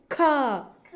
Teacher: ಜಾಸ್ತಿ ಉಸರು ತಗೊಂಡು ಹೇಳಬೇಕು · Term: ಮಹಾಪ್ರಾಣ